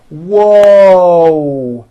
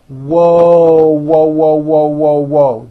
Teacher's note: There's a W sound at the beginning of that, but there's also a hidden W sound at the end.